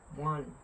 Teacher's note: Y en el caso de nosotros lleva una nasalización al final.